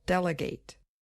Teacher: on the first syllable D and the verb form delegate has what we call secondary stress on the last syllable it's not quite as strong as the first syllable but it is enough to make the vowel sound change